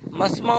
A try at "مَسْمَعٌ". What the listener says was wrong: مسمع عین پہ دو پیش ہے، تنوین ہے۔